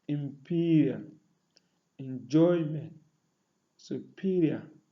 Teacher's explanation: Those that are stressed on the second syllables include imperial, enjoyment, superior.